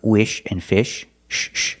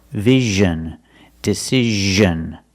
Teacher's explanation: it's the same position as sh like wish and fish sh sh but you make a voice you make vibration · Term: z sound